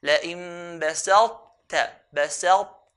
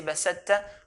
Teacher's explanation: So when we merge the ta onto the ta, we have to show that characteristic of heaviness. So here, we pronounce the ta, we have the characteristic of heaviness, then do the ta.